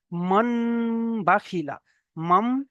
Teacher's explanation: দেখেন মিমের দ্বারা নুন সাকিনকে পরিবর্তন করতে হয়, এটাকে নুন, নুন সাকিন এসছে, নুন সাকিনের উপরে দেখেন পরে দেখেন বা এসছে, তাই না? তাই নুন সাকিনকে মিমের দ্বারা পরিবর্তন করে একালিফ পরিমাণ গুণনা করে পড়তে হবে। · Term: ইকলাব